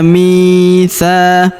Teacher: Huruf mi kita panjangkan dua harakat karena terdapat ya sukun di depannya.